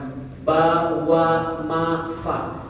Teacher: Itu kan itu di bibir semua tuh. Bibir yang bergerak, bukan di lidah, bukan di tenggorokan.